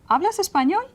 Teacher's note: So my intonation has to rise at the end. · So you just raise the voice at the end a little bit.